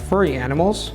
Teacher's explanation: furry animals the tone is going up because I haven't finished